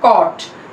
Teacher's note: Back rounded vowel between half close and half open position, क्योंकि back vowel में जहाँ पे आते हैं वहां पे सिचुएटेड है, हाफ क्लोज और हाफ ओपन के बीच में है, और लिप्स की पोजीशन हमारी राउंडेड है, तो it is back rounded vowel between half close and half open position.